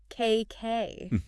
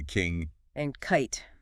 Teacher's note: K is like H in that it's voiceless. No vocal cord vibration. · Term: K sound